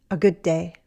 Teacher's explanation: Good ends with D, and day starts with D, and we say it as one longer D.